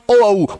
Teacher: ओष्ठ कंठे या कंठोष्ठ्य, जिसमें कंठ और ओष्ठ इन दोनों का प्रयोग होता है।